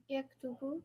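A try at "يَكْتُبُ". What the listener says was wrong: That's it. Done. Yaktubu. Great.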